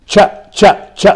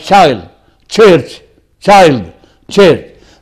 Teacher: 2 sounds together. The ta and the sha. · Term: affricates